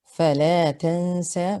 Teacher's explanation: Here we have a noon with sukun followed by a sin, and the ruling is ikhfa, to hide the noon into the sin. So you hide it and you hold the gunna for 2 counts, and the ending is the same with all the other ayats.